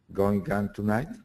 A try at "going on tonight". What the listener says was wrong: Go and get rid of the G. There's no G.